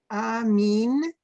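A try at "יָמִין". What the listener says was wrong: There's a little yud. You gotta pronounce it. Yamin.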